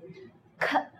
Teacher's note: when you say k, you would not feel any vibration. If you notice, the air comes out.